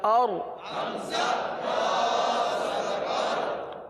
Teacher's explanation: را کے لیے زبان کو اٹھائیے، را کو پر پڑھیں گے، کیونکہ را ساکن سے پہلے زبر یا پیش آ جائے تو را کو پر پڑھا جاتا ہے، لہٰذا اس را کو پر پڑھیں گے۔